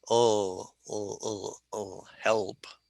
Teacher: With the L, the tip of your tongue goes up and behind your teeth.